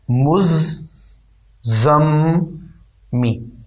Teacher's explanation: میم کو پہلے زا سے ملانا ہے، اور پھر زا کو دوبارہ میم سے یعنی اس کے آگے والے میم سے تشدید کے ساتھ ملانا ہے، مزمی، یعنی زا درمیان والا زا جو ہے یہ دو دفعہ پڑھا جانا ہے، اور پھر زا کے بعد والی جو میم ہے یہ بھی دو دفعہ پڑھی جانی ہے۔ پہلے والے میم کو زا سے ملانا ہے، پھر زا کو اس کے آگے والے میم سے ملانا ہے، مزمی۔